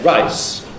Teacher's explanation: then you have this pre-fortis clipping on rice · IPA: [raɪs]